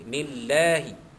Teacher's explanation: kenapa Allah tu dibaca tarqiq nipis kerana huruf nun sebelumnya baris bawah